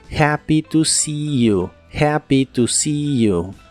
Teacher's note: La palabra see se pronuncia con la I larga